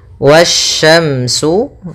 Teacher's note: Pada bacaan wasyamsu di sini ada alif lam syamsiah yang mana alif lam dan alif dan lamnya tertulis akan tetapi alif dan lamnya tidak dibaca sehingga kita langsung baca ke huruf setelahnya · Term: alif lam syamsiyah